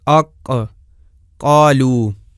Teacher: زبان کی انتہا والی جگہ اوپر کی جانب بلند ہوتی ہے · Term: قاف کا مخرج